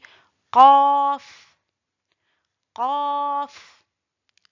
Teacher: c'est de l'élévation du fond de la langue vers la partie molle du palais.